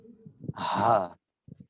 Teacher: হলকের শুরু থেকে উচ্চারিত হচ্ছে ছোট হা। হা এটা একদম বুকের কাছাকাছি অংশ, কণ্ঠনালীর যে অংশ, সেখান থেকে উচ্চারিত হচ্ছে হা।